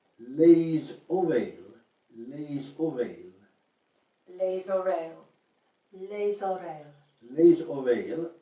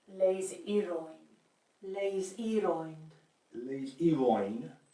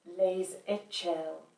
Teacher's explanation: the S is so strongly pronounced that it's probably better to think of it as a Z.